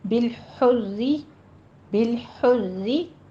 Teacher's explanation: یہ را تشدید ہے کسرہ والی، اس لیے باریک پڑی جائے گی